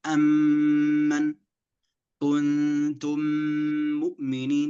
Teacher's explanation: فتصبح ميم واحدة مشددة، فهذا يسمى بالإدغام الشفوي، لأن الميم تخرج من الشفتين